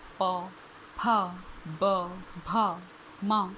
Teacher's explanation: पवर पवर्ग में ओष्ठय लिखा है। ओष्ठय मतलब हमारे दोनों होठ मिलकर उस साउंड को प्रोड्यूस करते हैं।